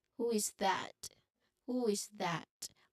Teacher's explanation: there should be rising intonation at the end of the question because it's a question and usually when we ask when we create or when we construct a question statement um there should be rising intonation especially at the end part. · there should be rising intonation, especially at the end part. So it would be, who is that?